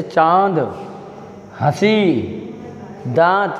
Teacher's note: इनका उच्चारण नाक व गले दोनों से किया जाता है